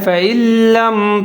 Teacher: فَإِن لَّم، فا کے اوپر زبر ہے، حمزہ کے نیچے زیر ہے، نون ساکن ہے، لیکن آگے لام مشدد ہے، تو یہاں ہم ادغام کریں گے بغیر غننے کے، اور نون جہاں پر ختم ہو جائے گا، نون کی آواز کو نہیں پڑھیں گے